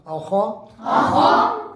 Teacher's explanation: خا کو اپنے مخرج سے موٹا کر کے پڑھنا